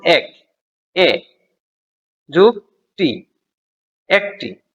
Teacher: ওকে, তো স্বরধ্বনি দুটি উচ্চারণের দিক থেকে এক শ্রেণীর নয়। এ হলো নিম্ন মধ্য স্বরধ্বনি আর ই হলো উচ্চ স্বরধ্বনি। তো এখানে সেভাবেই এ যোগ ই, এ দুটি পরিবর্তিত হয়ে এ হয়েছে।